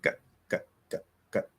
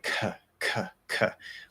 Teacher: It's a K sound, but you don't hear any breath.